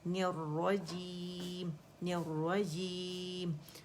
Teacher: रा जो है मुशद्दद है, तो इस पर हमने जमाव ज़रूर देना है